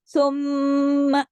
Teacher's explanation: जब एक मीम गुन्ने के बगैर अदा नहीं होता, तो जब दो मीम होंगे तो दो गुन्ने जब इकट्ठे होंगे तो ज़ाहिर है बड़ा गुन्ना हो जाएगा ना, देर तक, थोड़ा ज्यादा देर तक आवाज को हम नाक में छुपाएंगे तो ये बड़ा गुन्ना हो जाएगा, जिसका नाम तजवीद की जुबान में गुन्ना है अकमल।